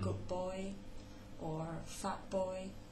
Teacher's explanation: the t assimilating to p in front of b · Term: anticipatory assimilation